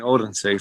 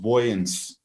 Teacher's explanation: the local dialect seems to have basically retained the diphthong that you also find in in old english